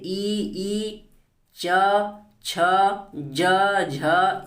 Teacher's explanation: ई जब कहेंगे तो आपकी जो जीभ है तालु से क्या हो रही है, चिपक रही है